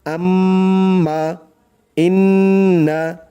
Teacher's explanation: দেখুন এখানে মিমের উপর তাসদিদ আর এখানে নুনের উপর তাসদিদ, টান দিয়ে গুন্নাহ করে পড়তে হবে। আম্মা, ইন্না, মানে গুনগুন করে গুন্নাহ করতে হবে। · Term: ওয়াজিব গুন্না